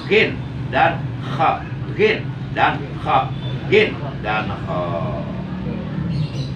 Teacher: Huruf yang keluar dari aqsal halki atau dari ujung tenggorokan atau a'lal halki atau tenggorokan bagian atas ada berapa? 2, yaitu gin dan kha.